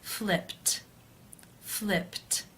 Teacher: the final sound of the verb is p which is unvoiced therefore it is case one and the ed is pronounced as a t